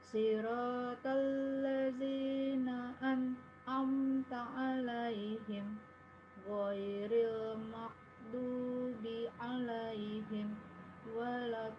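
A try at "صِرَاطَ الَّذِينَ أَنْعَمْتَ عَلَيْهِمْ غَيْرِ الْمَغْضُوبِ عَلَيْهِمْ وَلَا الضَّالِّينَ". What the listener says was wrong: sependengaran Ana aman ya bacaannya ya.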